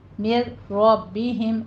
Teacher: नून की आवाज़ नहीं आनी चाहिए, बिल्कुल स्किप कर दें उसको। मिर मिर रब्बी, रॉ मुफ़ख़म पढ़ी जाएगी, और बा के नीचे भी ज़ेर है, हिम में भी आपने दोनों की आवाज़ बारीक रखिएगा। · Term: इदग़ाम बिला गुन्ना